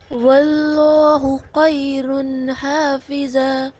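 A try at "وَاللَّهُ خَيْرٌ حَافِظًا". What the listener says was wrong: آپ کا خا نہیں ادا ہو رہا. خا خیر. دیکھیں خا کیسے ادا ہوگا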